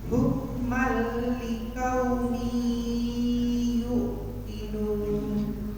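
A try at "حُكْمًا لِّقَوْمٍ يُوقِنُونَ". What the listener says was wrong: Bukan yuk tapi yu dipanjangkan.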